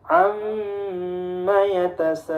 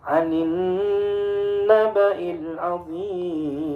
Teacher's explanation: Mimnya bertasydid ditahan 2 ketukan, nunnya bertasydid pun ditahan 2 ketukan.